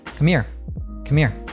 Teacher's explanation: We completely drop that H sound there.